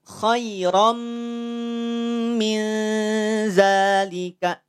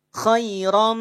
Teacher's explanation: ra tanwin fathah bertemu dengan mim. Maka dengungnya sempurna. Kalau kita tutup hidung kita, khairam, langsung terhenti.